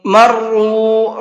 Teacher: را کو پر کر کے بھی پڑھیں گے اور ساتھ ساتھ کھینچ کر کے بھی پڑھیں گے